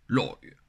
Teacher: C'est l'oi, et on le fait avec une vague. Donc l'oi, on chute d'abord, comme si on était surpris. L'oi, et ensuite on remonte.